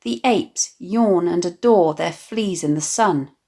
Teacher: the long, drawn-out vowel sounds of /ay/, /or/, /or/ and /ee/